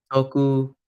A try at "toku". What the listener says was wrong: Toku. Because it has a macron, you hold it.